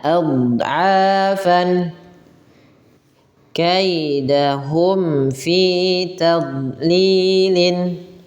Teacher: huruf dhad ini huruf yang memang kita keluarkan daripada sisi-sisi lidah kita